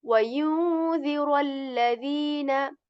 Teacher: we are going to join ra with lam here